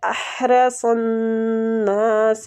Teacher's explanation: یہ جو ہا ہے نا یہ وسط الحلق مطلب حلق کے درمیان والے حصے سے ادا ہوتی ہے